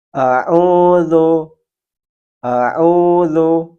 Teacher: Huruf zal sering dibaca seperti huruf za, za, dengan ada suara tambahan berdesis. Padahal huruf zal tempat keluarnya adalah ujung lidah menyentuh gigi seri bagian atas dan lidah sedikit keluar tanpa dikeluar nafas